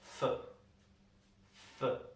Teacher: we have for, which in a normal conversation we would pronounce simply as f.